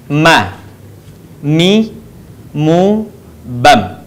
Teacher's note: huruf mim atau Ma dikeluarkan dengan cara merapatkan bibir kita